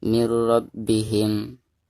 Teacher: Nah, maka itu dihukumi idgham bila guna. Dan cara membaca nun sukun atau tanwin tersebut itu harus dimasukkan langsung ke huruf ro atau huruf lamnya secara tidak didengungkan